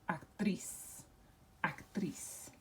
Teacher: So it has to be accented or emphasized on the last syllable. And so we would underline that and we would pronounce that actriz.